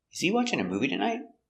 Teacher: It's a yes or no question. The intonation goes up at the end.